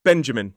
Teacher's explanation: Three syllables, stress on the first. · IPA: /ˈbendʒəmɪn/